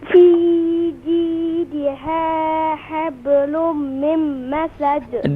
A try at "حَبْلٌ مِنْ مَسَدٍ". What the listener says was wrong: Do complete غنة. حبل من مسد. ميم مشدد.